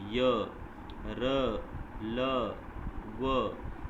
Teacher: इन व्यंजनों का उच्चारण करते समय जीभ मुंह के किसी भी भाग से पूरी तरह स्पर्श नहीं करती, यानी कि किसी भी भाग को ये जीभ हमारी स्पर्श नहीं करती जब हम इन चारों को बोलते हैं, तो यानी कि जीभ हमारी बीच में रहती है, इसीलिए इसको अंतस्थ व्यंजन कहा गया है। · जब हम सबको बोलते हैं तो हमारे जो जीभ है वो बीच में रहती है, ना ऊपर टच होती है ना नीचे टच होती है, तो इसीलिए इनको अंतस्थ कहा जाता है, यानी कि बीच का।